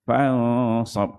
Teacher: Kalau ini nun dengan sad, dah ikhfa kat situ. Dia dengung 2 harakat. Fansab. Lepas tu, far, tebal.